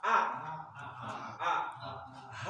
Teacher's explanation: Kalau A tadi ditahan, kalau H itu hamas harus keluar nafas.